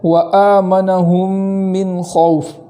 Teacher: آگے ہے وآمنہم من خوف، وآمنہم کے اندر جو حمزہ ہے وہاں اس حمزہ کو خوب جھٹکے سے پڑھیں گے اور ایک الف کے برابر تاخیر کریں گے